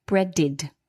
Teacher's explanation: Now bread ends in a d which is this dental consonant. So the ed d is pronounced id.